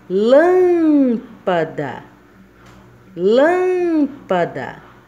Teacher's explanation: então o lan está sendo pronunciado mais forte se é o islã a sílaba tônica então está na antepenúltima